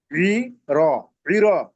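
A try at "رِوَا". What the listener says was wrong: ওয়া আছে ওটা ওটা ওয়াও।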